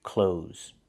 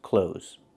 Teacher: Do not pronounce the TH.